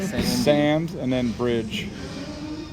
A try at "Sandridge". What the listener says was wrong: S-A-N-D-R-I-D-G-E. Not bridge. Ridge.